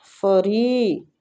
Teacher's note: ری کو کھینچیں گے اور را کے نیچے کسرہ ہے، اس لیے ہم را کو باریک پڑھیں گے